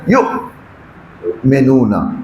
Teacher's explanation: عین اور حمزہ میں فرق یہی ہے کہ حمزہ جب آپ ادا کریں گے تو بطور مکمل آواز انسان کی گلے میں بند ہو جاتی ہے، محبوس، مثلا یؤمنون۔